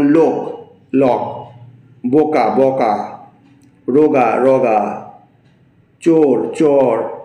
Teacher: ওকারের অকারে উচ্চারণের প্রবণতা ব্যাপক